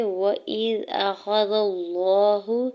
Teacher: حمزہ کے زیر کو دال ساکن کے ساتھ ملاتے ہوئے پڑھیں گے